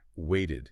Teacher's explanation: Because wait ends in a T sound, we need that extra syllable to make the past tense clear.